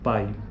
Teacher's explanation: está decrescendo graficamente né e a sequência é vogal e semivogal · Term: ditongo decrescente